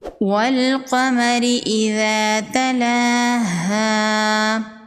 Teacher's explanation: قاف حروف مستعلیہ میں سے ہے، قاف کو پر پڑھیں گے